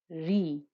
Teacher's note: when raw has a kesra the back of the tongue doesn't become thick it doesn't become a heavy noise re a bit like the closest I can get to it